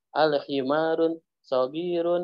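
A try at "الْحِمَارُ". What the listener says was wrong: Al-himaru, jangan pakai tanwin. Al-himaru.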